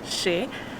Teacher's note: you smile when you pronounce E fermé, closed E sound.